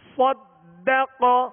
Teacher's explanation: قاف پر زبر ہے لہذا اس کو کھینچیں گے نہیں اور حروف مستعلیہ میں سے بغیر ہونٹ گول کیے اسے پور یعنی موٹا پڑھنا ہے